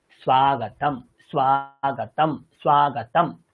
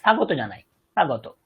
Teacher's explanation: দেখুন বাংলাতে আমরা বলি স্বাগত, কিন্তু সংস্কৃতে দন্তের সাথে একটা ব যুক্ত আছে। বাংলায় কিন্তু এই যুক্ত বর্ণের বকারের উচ্চারণটা হয় না